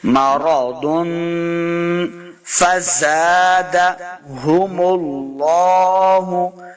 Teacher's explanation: مرادن، اور دعات کے اوپر پیش کی تنوین ہے. آگے فا جو ہے یہ حروف اخفاء سے ہے، تو یہاں پہ ہم نے غنہ کر کے پڑھنا ہے